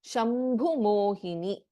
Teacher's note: in ಶಂಭು ಭಸ್ ಎ ಮಹಾಪ್ರಾಣಾಕ್ಷರ